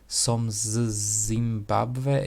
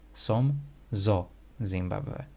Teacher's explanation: we add a little vowel in between to just soften it up a little bit so it's not so hard to pronounce. Som zo Zimbabwe.